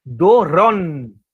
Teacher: Tem que ser um do. Aí você tem que fazer o r, tem um O aberto e um N, não é um M.